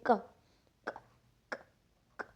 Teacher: So the it is unvoiced because we cannot feel the vibration in the throat when you say k, k, k, k.